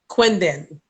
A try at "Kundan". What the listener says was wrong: Kundan. Kundan. It's not a Q, it's a K. K-U-N-D-A-N. Kundan.